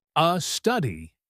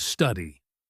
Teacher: adding an extra vowel before a consonant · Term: adding extra sounds